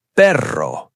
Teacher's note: Double R. You trill it. Perro. Tongue vibrates.